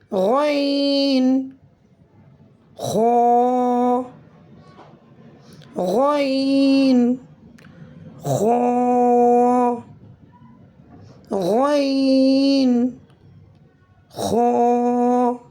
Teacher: ادا ہوتے ہیں شروع حلق سے جو منہ کے قریب ہے یا ایسے بھی کہہ سکتے ہیں منہ کی جانب ہے۔ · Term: حروف حلقی